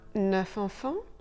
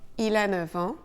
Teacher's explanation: Le F de neuf, devant les deux petits mots an et heure se prononcera [v]